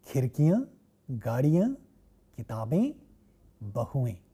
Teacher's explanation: You see khirki becomes khirkiyan and gaadi becomes gaadiyan, and the ones that do not end with long E like kitab and bahu will get a sound like A, which is nasalized in the plural form. So, all the plural forms in feminines are nasalized.